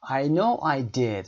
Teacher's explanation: صداتون رو هم بالا میبرید. rising intonation دارید